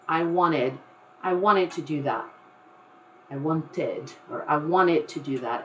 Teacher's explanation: I myself, I believe that when I say it, if I'm speaking, I usually will just say I wanted to come over here. I don't even pronounce that T that comes from want.